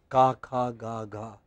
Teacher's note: All sounds coming from back of the tongue